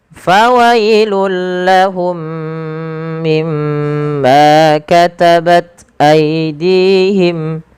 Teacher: mim yang pertama ketika ia sukun bertemu dengan mim setelahnya, maka ini wajib ditahan suara mimnya · Fawailul lahum sama dengan fawailul lilladzi, yaitu suara lamnya langsung dimasukkan ke huruf, suara tanwin yang langsung dimasukkan ke huruf lam karena ia idgham bila gunnah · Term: idgham mimi